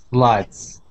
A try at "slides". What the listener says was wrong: Good. Good. Nice job.